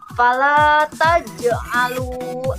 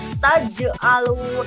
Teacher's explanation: Ketika kita mengucapkan taj'alu itu harus dipantulkan ya anak-anakku sekalian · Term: qalqalah